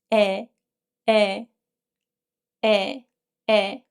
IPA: e